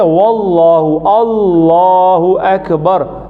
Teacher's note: अगर अलिफ ये अल्लाह से पहले ज़बर या पेश आती है तो अल्लाह का लाम मोटा पड़ जाता है